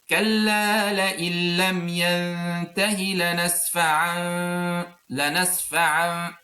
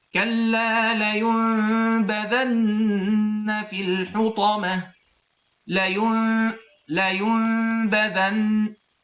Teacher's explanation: So just to resume or summarize what's إقلاب, it's transforming noon into a hidden meme with غنة